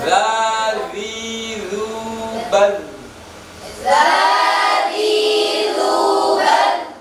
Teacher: Huruf dal itu bukan huruf kol-kolah sehingga tidak boleh memantul, tidak boleh dibaca bal, tapi bal ditahan.